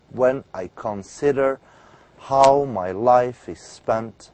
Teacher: a meter that begins with unstressed syllable and a stressed syllable an unstressed and a stressed syllable